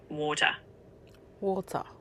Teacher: In a New Zealand accent, water tends to have a bit of a rounded vowel, so it might sound more like water.